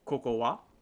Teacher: And I put a little bit of rising intonation, right? So it sounds like I'm asking a question.